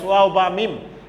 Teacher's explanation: These 3 letters are pronounced from 2 lips. I mean, if you use your 2 lips, then you can utter these 3 letters, waw, ba, mim. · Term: Labial letters